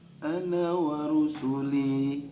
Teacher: linya panjang 2 harokat ya